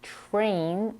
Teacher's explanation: the first sound in the word train is pronounced as something between the T and CH as in the word choice this is common when we have a TR combination in the